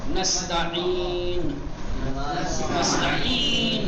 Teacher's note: حلق کے 3 حصے ہیں ایک ابتدائی ایک درمیانی ایک آخری. یہ حرف عین درمیانی گلے کے درمیانی حصے سے نرمی کے ساتھ ادا ہوتا ہے